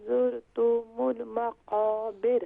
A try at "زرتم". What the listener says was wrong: زرتم نہیں ہے، یہاں پر تا کو بھی شارٹ ساؤنڈ کریں گے، میم کو بھی شارٹ ساؤنڈ کریں گی، تو زرتم